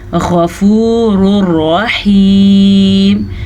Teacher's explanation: इदगाम बिला गुन्ना के हिसाब से तनवीन के बाद रॉ आया हुआ है तो हम इन दोनों को आपस में मिलाएंगे लेकिन गुन्ने के बगैर।